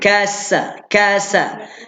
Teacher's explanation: Sin baris atas sa, ada bunyi Siulan sikit, ada siran.